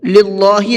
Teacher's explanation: یہاں اللہ کے لام کو باریک کر کے پڑھیں گے۔ للہ نہیں پڑھنا ہے بلکہ للہ۔